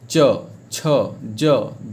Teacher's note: इसका उच्चारण तालु से होता है। आपका जीभ देखिए च देखिए, दांत के और पीछे जो कंठ है उसके बीच वाले भाग में ऊपर में सट जाता है कि नहीं, च छ ज झ, और सब जगह देखिए जीभ वहीं जाके सट रहा है, तो उसको तालु कहते हैं।